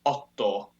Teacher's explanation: octo in Latin becomes otto, where the kta just becomes a long ta